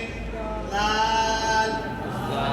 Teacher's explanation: जुबान की नोक के ऊपर के दो दांतों की नोक की तरफ वाले आधे हिस्से से लगे